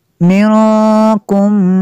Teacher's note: نون ساکن کے بعد کاف حروف اخفا میں سے تو یہاں پہ اخفا ہوگا، اس لیے غنہ کریں گے